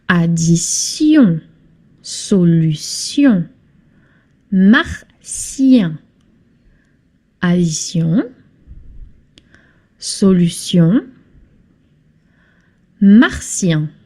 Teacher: And we finish with sion when it's the last syllable in a word. This is not pronounced chion, but sion, as in snake, the S from snake.